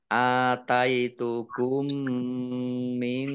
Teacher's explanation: Langsung ya, mim yang pertama tidak dibaca, langsung masuk ke mim yang berikutnya. Karena sama-sama mim sehingga ya tidak kelihatan, langsung mim semua ya. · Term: idgham mimi